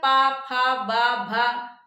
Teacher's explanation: प वर्ग जो है प फ ब भ दोनों होठों को सटाना पड़ रहा है। फिर जाके आप उच्चारण कर पा रहे हैं। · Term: ओष्ठ